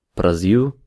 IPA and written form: bɾaˈziu̯ (Brasil)